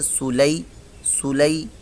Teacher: لام یا زبر لئی، یہ یا ساکن سے پہلے زبر ہے تو یا لین بن گیا، اس کو بھی لمبا نہیں کریں گے